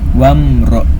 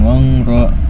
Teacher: Mimnya dibaca jelas. Mim sukunnya dibaca dengan jelas sesuai dengan makhraj atau keluar huruf mim tersebut. Wamro. Jangan ditahan, jangan wangro, jangan harus wamro. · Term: izhar syafawi